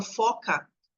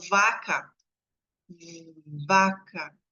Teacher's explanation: só que um é surdo outro é sonoro no caso o f é surdo e o v é sonoro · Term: surdos e sonoros